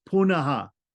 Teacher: because it's in front of a unvoiced letter the r changes to visarga so it becomes punaha